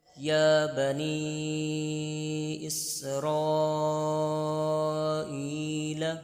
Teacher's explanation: آپ نے حروف مدہ کی مقدار 1 الف یعنی 2 حرکات کے برابر کھینچ کر پڑھنا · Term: کھڑی حرکات